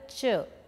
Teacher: palato alveolar, two pair of articulators, blade of the tongue and teeth ridge and front of the tongue and hard palate